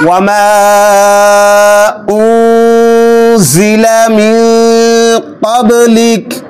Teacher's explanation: এখানেও মাদের হরফের পরে দ্বিতীয় শব্দের শুরুতে হামজা এসেছে, এজন্য মাদ্দে মুনফাসিল 3 আলিফ টানতে হবে।